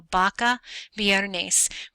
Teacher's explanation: the letters b and the letter V sound the same they both make the B sound it's kind of a soft B sound